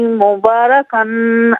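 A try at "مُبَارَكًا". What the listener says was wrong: مبارکن میں غنہ نہیں کریں گے، کن میں غنہ نہیں کریں گے. مبارکن نہیں، مبارکن نہیں ہے، مبارکن.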